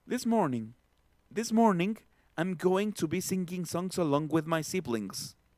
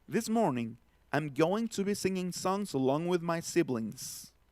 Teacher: lo voy a hacer primero atropellado y luego lo voy a hacer fluido, marcando primero la ng y en la segunda lo voy a hacer marcando la ñ de mango en todos los ing